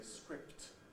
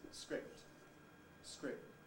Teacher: you don't usually hear the noise of the release of the first plosive